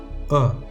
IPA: ə